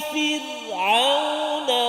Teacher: Sebelum dia huruf fa yang berbaris kasrah, maka ra tu dia bunyi tarqiq tipis. Jangan Fir'aun.